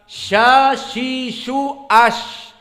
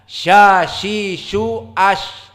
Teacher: sya makhrajnya adalah wastul lisan. Dia adalah pertengahan dari lisan. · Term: makhraj dari sya